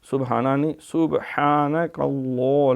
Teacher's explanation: صبح سین پہ سیٹی ہے، با پہ کلکلا ہے